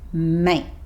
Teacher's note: He stops himself just before he makes the t sound at the end of mate.